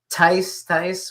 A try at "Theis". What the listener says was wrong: Theis. No, just ignore the H. I know you want to say the H. Just ignore the H.